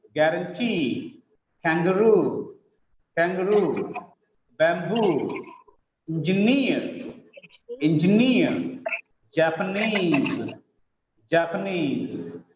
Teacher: In all these examples, the last syllable is stressed.